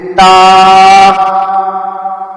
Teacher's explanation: زبان کی نوک جب سامنے کے 2 بڑے دانتوں کی جڑ کو لگے تو تا ادا ہوتا ہے